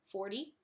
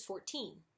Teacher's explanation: the teen part and it's a strong T sound very aspirated